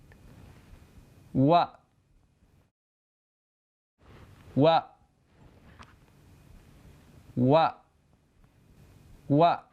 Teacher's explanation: دونوں ہونٹوں کو گول کر کے کھولتے ہوئے واو کو ادا کیا جاتا ہے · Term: واو کی آواز